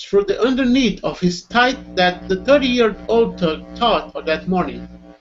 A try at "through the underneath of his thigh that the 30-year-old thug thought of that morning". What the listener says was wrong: Now, I think you went a little too fast there, but repeat after me, please.